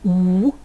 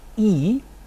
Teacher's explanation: parameter the parameter of lip rounding you may have noted that some of the vowels I've just produced uh were produced with rounded lips like ooh others were produced with spread lips like e